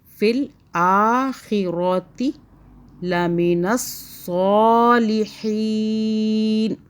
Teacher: فل آخرہ, را کو موٹا پڑھیں